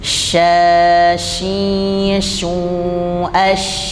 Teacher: mengeluarnya angin dari sela-sela gigi semuanya Jadi bukan hanya bagian depan tetapi dari samping juga intinya semua sel gigi itu ada angin yang keluar sehingga anginnya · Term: syin